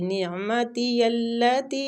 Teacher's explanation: نون کے ساتھ عین کو حلق سے نکالنا ہے،